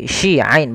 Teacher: Ini hati-hati, shi ain bukan khasiin, dan juga ain hati-hati jangan dibaca dengan hamzah